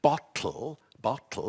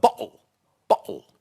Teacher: A glottal stop is the sort of sound, the little cough, when the vocal cords come together and replace the consonant.